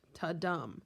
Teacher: the iambic part means that it goes unstressed, stressed, unstressed, stressed, etc., etc. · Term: iambic pentameter